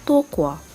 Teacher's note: Maka terdapatnya pengguguran labiliasi AU ataupun AU lalu digantikan kepada huruf vokal O. Di dalam tokwa juga terdapatnya pengguguran huruf konsonan H lalu digantikan kepada huruf konsonan K.